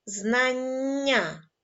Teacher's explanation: в цьому слові ви теж почули подовжений приголосний на письмі він буде позначатися двома літерами н складемо звукову схему